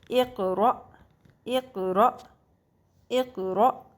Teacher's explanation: حمزہ زبر حمزہ زیر ای، حمزہ پیش او، اور اب اس کے اوپر اگر ساکن ہے تو اس کو جھٹکا دے کے پڑھا جائے گا۔ حمزہ جب بھی اگر ساکن ہو یعنی کہ اوپر جزم کی علامت ہو تو اس کو جھٹکا دے کے پڑھیں گے